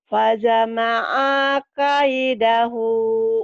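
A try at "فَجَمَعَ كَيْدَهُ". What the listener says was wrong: Jimnya keras. Fajama'a kaidah. Fajama'a kaidah.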